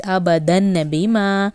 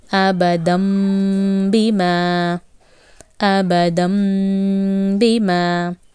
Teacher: when you have Tanween and ba coming, you will leave the noon sound, you will add the meem sound, and you will elongate for 1 second. That is what you do in Iqhlab. · You will replace noon sound with meem and you will elongate for 1 second. So it will be abadam bima, abadam bima.